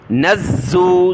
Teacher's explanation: نون کو زا کے ساتھ ملایا زا کو سخت کیا